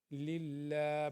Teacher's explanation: یہاں پہ اللہ سے پہلے نیچے زیر آ گئی ہے، للہ باریک پڑا جائے گا